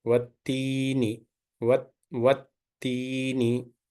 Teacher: Lam is silent. So directly Fatha joins with the letter Ta, as Ta is the Shamsiya letter here.